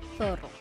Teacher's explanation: La Z suena. Es fricativa, interdental, sorda. Ejemplo, zorro. · La R suena R, vibrante compuesta. Alveolar sonora.